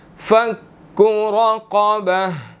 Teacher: را اور قاف اس کے اندر دونوں موٹے ہیں, ٹھیک ہے, موٹے حروفوں میں سے ہے.